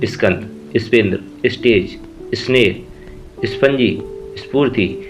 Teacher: यदि स के बाद क से म तक, का कबूतर से माँ मछली तक में से कोई भी व्यंजन आए तो उच्चारण में स से पहले ई की ध्वनि आती है, जबकि वहाँ ई उपस्थित नहीं होता। इसके आगे अ की ध्वनि नहीं आती।